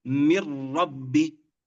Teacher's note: النون حرف النون ذهب، وصفة الغنة في النون ذهبت. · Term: إدغام كامل